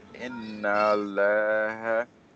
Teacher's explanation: First lam is silent, it does not have any vowel. Second lam has sukoon.